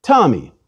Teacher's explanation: If I say, for example, the name Tommy, I put a puff of air after the T. If I take away that puff of air, I would say Tommy. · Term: Aspirated